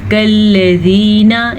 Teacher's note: बाज़ लोग इसको मोटा कर देते हैं, पढ़ते हैं कल्लज़ीना, ये गलत है। लाम भी बारीकी से पढ़ा जाता है और काफ भी बारीकी से पढ़ा जाता है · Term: बारीक काफ